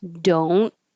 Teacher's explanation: Don't, you won't hear that T.